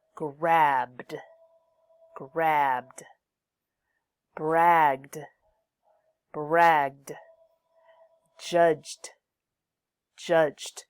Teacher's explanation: use the D sound after voiced final sounds